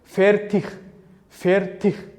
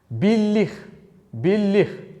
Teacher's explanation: so'zlarni oxirida g ni x, ya'ni o'zbek tilidagi qattiq h ga o'xshab talaffuz qilamiz